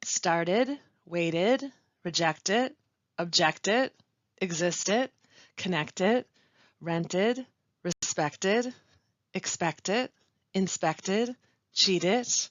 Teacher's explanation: Verbs ending in a t sound will have an ending that sounds like id.